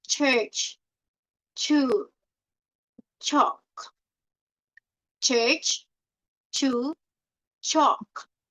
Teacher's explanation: a part of the tongue touches the hard palate. Then it releases slowly, as in words like church and chew and chalk. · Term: CH sound